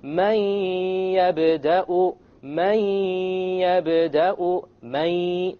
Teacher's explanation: It's immediately the mim associates with the ya, and you drop the noon sound. But you have a ghunnah, and that's the nasal sound.